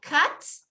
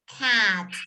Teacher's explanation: cut, así con la boca media cerrada, cut. ¿Sí? Y el animal es cat, la boca bien abierta, cat.